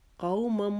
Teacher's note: قو کو بھی ایک الف کے جتنا ہم نے لمبا کھینچ کے پڑھنا ہے کیونکہ یہ لین کا قاعدہ ہے. قومم آگے میم مشدد ہے، اس وہاں پر بھی ایک الف کے جتنا رکیں گے میم مشدد کے لیے.